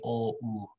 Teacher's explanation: your tongue moves back when you say oh